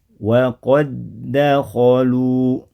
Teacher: Dal yang pertama pada kata waqad sudah tidak memantul lagi karena sudah digabungkan, dileburkan, dimasukkan ke huruf dal yang ada di depannya. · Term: idgham dal ketemu dal